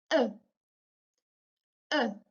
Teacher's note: As for the consonants, the first sound that we have is a glottal stop, and it's called the hamza in Arabic, and it's pronounced as uh, uh.